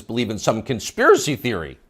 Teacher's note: You'll notice the upspeak, the rising inflection at the end of the sentence.